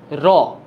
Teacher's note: দ্রুত দন্তমূলকে আঘাত করে, এই বৈশিষ্ট্যের কারণে তাকে আবার বলা হচ্ছে কম্পনজাত ধ্বনি। কম্পিত বলা থাকতে পারে, অথবা আপনারা বলা থাকতে পারে কম্পনজাত ধ্বনি।